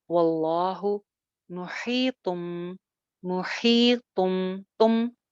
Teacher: Again लफ्ज जलाला, अल्लाह का नाम, इससे पहले जबर है लिहाजा इसको मोटा करेंगे।